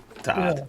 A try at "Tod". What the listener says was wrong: It's spelled T-O-D. You pronounced it with two D's.